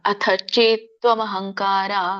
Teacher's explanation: ಅಥ ದೊಡ್ಡ ಥ ಇದೆ ಮಹಾಪ್ರಾಣದೆ ಚೇತ್ ಚೆ ಎಳಿಬೇಕು ತ ವ್ಯಂಜನ ಅಥಚೇತ್ ಹಂಕಾರ ಅತಚೇತ್ವಮಹಂ ತತ್ವಮಹಂ ಹಂಗ ನೋಡಿ